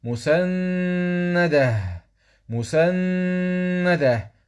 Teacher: نقف على التاء المربوطه بالهاء مسنده مسنده مسنده مسنده مع نص الوصل اولى مع جواز الوقف